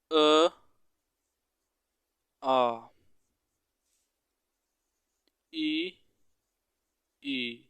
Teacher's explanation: ई और ई इसका उच्चारण है तालव्य · अ और आ का उच्चारण स्थान होता है आपका कंठ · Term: कंठ वर्ण